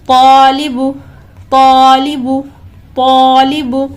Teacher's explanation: یہاں پر الف مدہ ہے تو 2 سیکنڈ کھینچیں گے، اس کے بعد متحرک حرف ہے، بالکل بھی نہیں کھینچ کر پڑھیں گے.